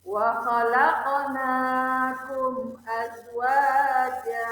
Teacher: Wa khalaqnakum terdapat huruf qaf berharkat sukun, berada di tengah-tengah kalimat. Maka cara membaca qaf dipantulkan dengan pantulan kecil.